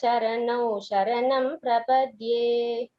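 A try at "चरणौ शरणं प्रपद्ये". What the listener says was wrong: Secondly, the na pronunciation should be clearer. Shri Venkatesha charanau sharanam prapadye. It is not na, neeladi. There it is na. That is a different na. Here na, charanau sharanam prapadye. This difference, it holds good for everyone. Please note that difference while chanting na and na.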